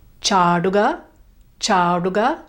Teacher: Make sure it's a long a and the retroflex ta